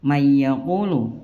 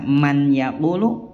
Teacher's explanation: Ya, kalau idgham bi gunnah artinya idgham masukkan huruf dalam huruf nun sukun atau huruf bertanwin dalam huruf idgham disertai dengan dengung, itu bi gunnah. Meleburkan nun sukun ke huruf berikutnya dan disertai dengan gunnah atau dengung 2-3 harokat. Contoh mayyaqulu, tidak dibaca man yaqulu melainkan mayyaqulu.